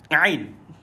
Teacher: Pada ain tolong dibaca dengan di tengah-tengah kerongkong.